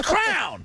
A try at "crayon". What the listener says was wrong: Crayon. It's not hard to say two syllables.